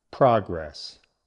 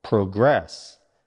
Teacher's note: Stress moves to the second syllable